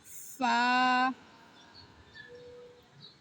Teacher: উপরের দাঁত নিচের ঠোঁটের সাথে লাগিয়ে উচ্চারণ করতে হবে।